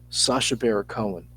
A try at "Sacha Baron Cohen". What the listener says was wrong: You keep saying Barra, not Baron. Baron.